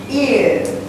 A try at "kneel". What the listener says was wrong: Eel, eel, eel, not ear. It's an L, L, L. Eel, eel, kneel.